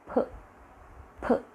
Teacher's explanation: we close the lips and the air is blocked inside the mouth and then we release it suddenly. So it comes out with a sort of explosion. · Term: plosive sound